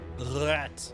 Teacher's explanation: It's a glottal roll and not a tongue roll.